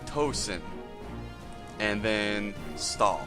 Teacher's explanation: TH, it's more like a hard T than a soft Th.